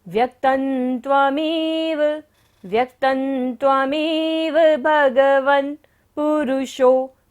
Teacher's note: त के ऊपर बिंदी है और बाद में क्या आ रहा है, त वर्ग, त थ द ध न। जब बिंदी के बाद होता है तो बिंदी का उच्चारण क्या होगा, न।